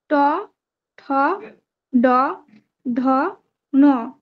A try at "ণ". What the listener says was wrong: ণ, ণটা ঠিক করে উচ্চারণ হচ্ছে না, ণ। যখন উচ্চারণ করছেন একবার স্থানগুলি মনে করে নেবেন, স্থান মনে করে নিয়ে তারপরে উচ্চারণ করবেন, দেখবেন হবে।